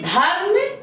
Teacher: धा के बाद रा को आप बहुत झटके से बोलते हैं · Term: रा का रेफ रूप